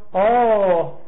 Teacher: 3声。 这个藏文的3声呢是先低中间高后边低，就是中国这个汉语的3声是挖下去，藏语的3声是拱起来